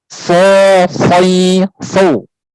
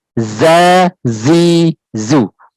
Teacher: Kalau sob tadi sifatnya hamas, kalau zai jahar. Tapi dia punya sifat rohwah, ya, sama-sama rohwahnya, mengalirnya suara.